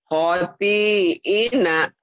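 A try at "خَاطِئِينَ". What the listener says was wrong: Ho-nya panjang. Khoti'ina.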